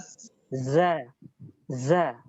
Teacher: zai memiliki sifat sofir, suara yang tajam di pendengaran.